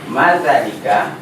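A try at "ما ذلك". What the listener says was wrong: Nah, lihat zanya panjang. Madzalika. Zalika kan zanya panjang. Madzalika.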